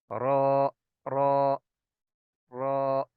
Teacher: बहरहाल एक तो होती है बिल्कुल नोक, उससे थोड़ा सा पहले, ऐसे एक दो सूत्र पहले, वो जो एरिया है ना ऊपर वाली, जो दोनों सामने वाले दांत हैं उनके मसूड़ों से लगाएंगे तो रॉ की अदायगी बिल्कुल ठीक होगी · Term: रा का मखरज